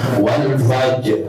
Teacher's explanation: Maka rnya kadang-kadang suka enggak kedengaran.